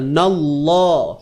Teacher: kalimah Allah ini tebal sebab sebelumnya terdapat huruf yang berbaris atas